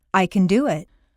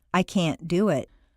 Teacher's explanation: Reduce the positive can to can and stress the verb. Make the negative can't sound very short and stress both can't and the verb. This will contrast with the positive emphasized can, which is doubled, and the verb is not stressed.